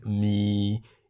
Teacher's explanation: mi in the low tone meaning noodles